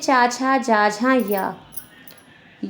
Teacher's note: तालु से बोले जाने वाले वर्ण होते हैं और इन्हें तालव्य वर्ण कहते हैं।